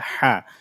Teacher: গলার মধ্যভাগ থেকে চাপ দিয়ে উচ্চারণ হবে হা